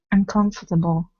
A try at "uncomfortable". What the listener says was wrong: Good. Uncomfortable. Perfect.